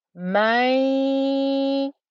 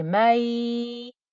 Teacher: So hopefully you can hear I've got a ya plus a ghunna. · I'm not just pronouncing ya, I'm pronouncing ghunna as well. So I would say it's 50% ghunna and 50% ya.